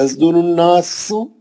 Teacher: درالناس، نون پہ غنہ ہے، مد اصلی ہے، سین کو سیٹی سے پڑھیں گے